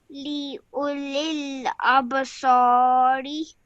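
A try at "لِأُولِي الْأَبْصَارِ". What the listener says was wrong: Okay, just try and say this as re. Just try and say a little less harshly and just nice and softly. Okay, just practice the sound of your ra. Okay, re like that.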